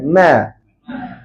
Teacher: masa kita sebut m tu pangkal lidah letak dekat bawah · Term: nipis